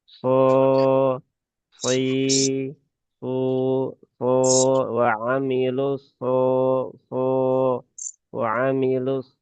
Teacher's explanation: huruf shad itu dia suaranya tebal, kemudian juga mengarahnya ke atas ya. So, ya, bukan so.